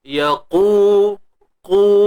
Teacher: Huruf qaf kita kena tebalkan dia. Yaqu, qu, huruf qaf ni dia bersifat isti'la yang mana terangkat pangkal lidah untuk menghasilkan suara tebal.